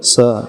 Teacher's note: तो हमारी जीभ जो है दांतों में टच करेगी, स नीचे के दांतों में टच करेगी। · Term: दंती सा